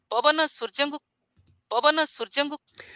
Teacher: the second syllable is already very high and then kind of flattens out or falls by the um last syllable now that last little · of flattens out or falls by the um last syllable now that last little fall it doesn't fall all the way to a low but it falls just to a not so high high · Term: early rise